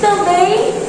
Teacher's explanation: a gente vai ver que a última sílaba é a mais forte